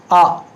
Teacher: मध्य से सिर्फ एक आ, ये मध्य से, जीभ के मध्य से आ निकलता है